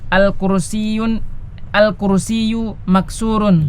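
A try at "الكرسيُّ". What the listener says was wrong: Nggak boleh pakai tanwin tadi ya. Al-kursiyyu bukan al-kursiyun.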